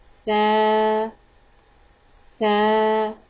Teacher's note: The letter of Sa pronounced from tip of the tongue and tip of the front two teeth.